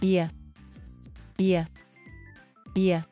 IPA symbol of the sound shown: y